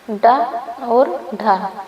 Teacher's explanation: जिन व्यंजन ध्वनियों के उच्चारण में जिहवा की नोक कठोर ताल के साथ झटके से टकरा के नीचे आती है उन्हें उचित व्यंजन कहते हैं। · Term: द्विगुण व्यंजन